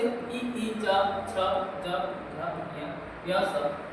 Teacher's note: कंठ अ, आ, क, ख, ग, घ, ह और अ जो है वो कंठ से निकलते हैं। तालव्य से इ, च, छ, ज, झ, ञ, य, स जो है वो तालव्य से निकलते हैं